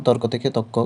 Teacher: শব্দের মধ্যে র লোপ পেয়ে যাবে বা রকার লোপ পাবে এবং পরবর্তী ব্যঞ্জন দ্বিত্ব হবে বা হয়